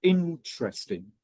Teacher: some people actually stress it on the first syllable